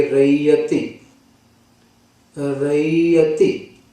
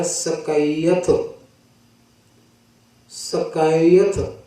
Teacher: ਇੱਥੇ ਸਪਸ਼ਟ ਤੌਰ ਤੇ ਰਾਰਾ ਯਈਆ ਤੱਤੇ ਨੂੰ ਸ਼ੇਰ ਨੂੰ ਵਿਸਥਾਰ ਕਰਕੇ ਲਿਖਿਆ ਹੈ, ਰਾਰਾ ਈੜ ਨੂੰ ਵਿਹਾਰੀ ਐੜਾ ਤੱਤੇ ਨੂੰ ਸਿਹਾਰੀ। ਤਾਂ ਸਪਸ਼ਟ ਹੈ ਕਿ ਯਈਆ ਅੱਖਰ ਜਿਹੜਾ ਹੈ ਸਵਰ ਵਿੱਚ ਬਦਲ ਗਿਆ, ਇਹਦੇ ਥਾਂ ਤੇ ਈੜ ਨੂੰ ਵਿਹਾਰੀ ਤੇ ਐੜਾ ਬਣ ਗਿਆ। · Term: ਸਵਰੀ ਧੁਨੀ